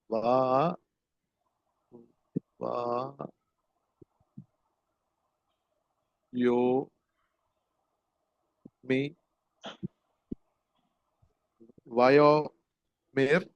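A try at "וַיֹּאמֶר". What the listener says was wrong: Vayomer. Only thing is you have to stress yod because there is dagesh forte.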